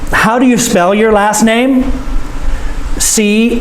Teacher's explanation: The voice goes up because he's asking a question.